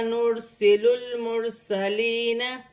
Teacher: را ساکن ہے، را ساکن سے پہلے پیش ہے تو را موٹی پڑھی جائے گی۔ لام ساکن ہے، لام کو لام کے ساتھ ملا کر پڑھا جائے گا۔